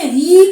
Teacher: री में हमारी जो ध्वनि है वो कंठ से और तालु से, दोनों से निकलती है, कंठ और तालु।